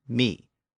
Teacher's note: some parts of Britain still pronounce my with its original pronunciation me